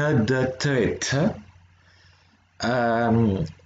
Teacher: c'est les alvéolaires, donc c'est toutes celles qui vont se retrouver avec quand vous mettez la langue derrière les dents, juste derrière les dents, juste avant le palais dur